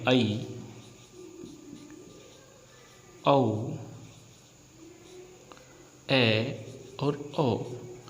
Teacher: यदि हम बात करें अर्धविव्रत की, तो आप सभी जानते हैं कि विव्रत माने होता है खुलना और अर्ध माने होता है आधा। यानी वे स्वर जिनके उच्चारण में हमारा मुख द्वार आधा खुलता है उसे हम क्या कहते हैं, अर्धविव्रत कहते हैं।